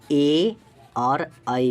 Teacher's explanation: कंठ और तालु से ए और ऐ का उच्चारण करते हैं।